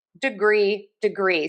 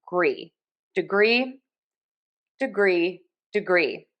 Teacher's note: Degree. So, we have a schwah here on syllable number one. That is our unstressed syllable. And then we are going to stress syllable number two.